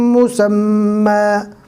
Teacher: دو زبر ہے، رکنے کی حالت میں الف مدہ بنے گا